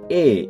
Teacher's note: এ কিন্তু ই এর মত বাইরে না এটা হচ্ছে এ একটু ভেতরের দিকে